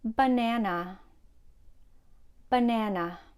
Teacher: the first and third syllable has the a sound or the schwa